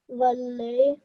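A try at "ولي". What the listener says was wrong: Well done, okay?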